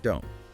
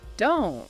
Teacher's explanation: the T at the end of don't is typically not fully pronounced as a crisp T sound with that little puff of air you might expect. You might just hear the tongue go to the T position and stop the air, but not release it before moving to the M of make. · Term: unreleased consonants